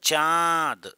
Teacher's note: रही है तो चंद्र बिंदु लगाएंगे समझ रहे हो चांद अब च के साथ आ नाक से भी आ रही है · अनुनासिक वाले मुंह के साथ साथ नाक से भी हवा निकले